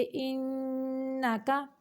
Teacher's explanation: इधर गुन्ना करेंगे यानी आवाज़ को नाक से निकालेंगे, नाक के बांसा से, तो काफ को बारीक करेंगे। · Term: नून मुशद्दद का गुन्ना